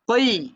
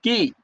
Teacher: কফের মাখরাজ কোথায় ভাই জিহবার গোড়া আর কাফের মাখরাজ হচ্ছে জিহবার গোড়া থেকে একটু সামনে যাবে